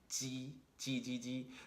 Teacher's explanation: what's making some contact initially with your hard palate is the blade of your tongue not the tip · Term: alveolo-palatal consonant